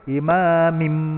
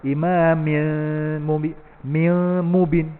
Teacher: So mim tu dominan, kuat. Dia kuat, so dia telan nun tu. Dia telan tanwin tu. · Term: Mim sabdu